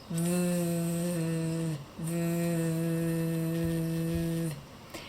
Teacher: have to do is turn on your voice to make because v is the voiced version of the sound f